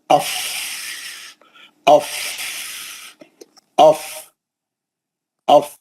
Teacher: नीचे का होठ और ऊपर के दो दांत उसके ऊपर बैठ जाते हैं और वो अदा होता है पीछे के हवा के प्रेशर से